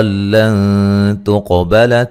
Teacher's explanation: یہاں نون ساکن کا اخفا ہے باریک